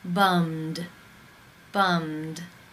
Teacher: The final sound in the infinitive is the M consonant sound. It is voiced. Therefore, it is case 2, and the ED is pronounced as the D.